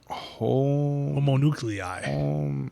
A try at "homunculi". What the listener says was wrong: No, it's not. No, homunculi. Homunculi, not homonuclei. There's not a second O. Homunculi. Homunculi. Homunculi.